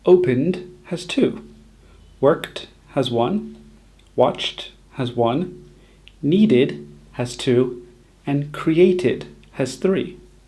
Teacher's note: the number of syllables for played, opened, worked, and watched hasn't changed, but the number of syllables for needed and created has increased by 1.